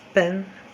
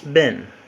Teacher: P is voiceless bilabial plosive consonant, while B is voiced bilabial plosive consonant.